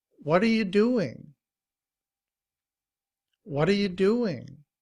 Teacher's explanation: notice that the t is often pronounced like a d also it's a it's a soft t what are you doing · What are becomes whata, whata. You becomes ya, ya. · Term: reducing words